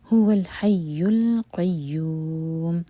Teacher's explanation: یوم ہم یوں 4 حرکہ لمبا کریں گے کیونکہ میم ساکن کر کے رک رہے ہیں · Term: مد عارض للسکون